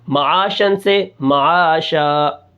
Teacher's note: آگے شین دو زبر شن، یہ نون کی آواز پیدا ہو رہی ہے، یہ نون تنوین ہے لیکن دو زبر ہے، ہم دو زبر کو حالت وقف میں الف سے بدل دیں گے